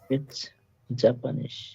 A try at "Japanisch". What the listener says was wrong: Japanisch, not Japanese, কারণ এটা ওয়াইয়ের মতো ইয়টের মতো উচ্চারণ হয়, তাই হবে জাপানিশ।